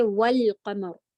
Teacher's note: حمزۃ الوصل تو ملا کے وقت نہیں پڑھی جاتی، لیکن لام القمری ہمیشہ پڑھا جاتا ہے. تو آپ ایسی حالت میں لام کو پڑھیں گی اور صرف لام پڑھا جائے گا، حمزہ نہیں، اور ہم پڑھیں گے والقمر.